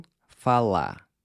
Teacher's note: Notice how I’m ***barely*** pronouncing the “r” in “falar”. Now, there’s a lot of regional variation in how the final “r” is pronounced, but for our purposes, we’re gonna treat it almost as a silent letter—“fa-LÁ”.